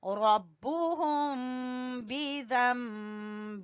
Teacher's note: यहाँ पर इक़लाब होगा, नून की जगह पे मीम पढ़ेंगे